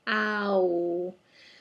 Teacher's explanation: our mouth goes from open ah a vertical plane of movement to a horizontal oh a horizontal plane of movement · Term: diphthong